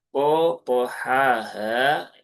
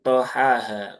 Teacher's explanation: huruf po ini juga huruf yang tebal ya, huruf tafkhim karena dia punya sifat isti'la ditambah dia punya sifat idbaq. Maka pastikan dia menebal.